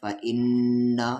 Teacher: नून पे तशदीद है तो गुन्ना होगा।